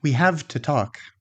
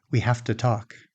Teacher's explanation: So we assimilate the sound and we devoice it. The v changes because it's next to the voiceless t. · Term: devoicing